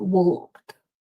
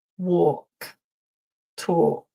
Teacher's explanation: The L is silent. We don't pronounce the L. It's not walked, but or, like in door.